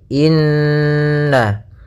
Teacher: Ya, maka cara membacanya adalah kita tahan dulu gunnahnya inna, baru kita baca na.